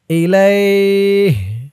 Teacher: ইলাইহি মধ্যে লিন, এই যে ইয়াটা হচ্ছে লিনের হরফ, লিনের হরফের পরের হরফে অক্ফ হয়েছে, তাই এখানে এই ইয়াটাকে একালিফ টান দিয়ে পড়তে হবে।